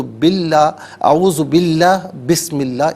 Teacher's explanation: خاص طور پر اس میں اللہ کا جو حرف لام ہے نا، اس سے پہلے حرف پر زبر یا پیش ہو تو تب پر پڑھتے ہیں، زیر ہو تو باریک پڑھتے ہیں. تو بسم اللہ اور اعوذ باللہ دونوں مقامات پر زیر ہے، تو باللہ، اعوذ باللہ، بسم اللہ، اس کو باریک کر کے پڑھا جائے گا